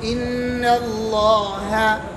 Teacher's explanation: یہ نون باریک ہے لفظ اللہ کا لام موٹا ہے